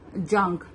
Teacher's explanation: نون کو ہم ظاہر نہیں کرنا ہے, نون کو چھپانا ہے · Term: اخفا